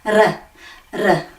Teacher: We need to make a little vibration at the top going R, R.